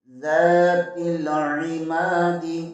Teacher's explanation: گے، را کے اوپر زبر ہے، را کو پر پڑھیں گے، زال زبر کے آگے الف مدہ ہے اسے 1 الف کے برابر کھینچ کر پڑھیں گے